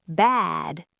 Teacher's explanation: Bad has a voiced D, so the vowel's long.